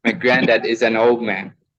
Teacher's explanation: you cannot hear the word D in old when you are reading the speech with a regular or natural speed.